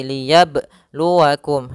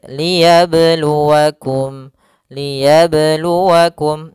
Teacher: Karena di sini qalqalahnya tidak boleh mantul, tidak boleh ada tambahan hamzah ataupun berhenti. Kan tapi dia mengalir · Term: qalqalah sughra